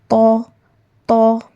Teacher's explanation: आपका ज़बान का नोक का ऊपरी हिस्सा top of the tip of the tongue जब सामने के ऊपर वाले दो दांत के जड़ से लगता है तो हर्फ तौ अदा होता है।